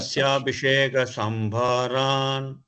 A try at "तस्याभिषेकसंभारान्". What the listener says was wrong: Tasya, not dasya. Tasyabhishekasambharan.